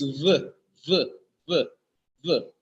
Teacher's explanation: there is the friction between the lips while producing the sound for the letter V is v v v v there is a buzzing sound when · the sound for the letter V is v v v v there is a buzzing sound when producing sound for the letter V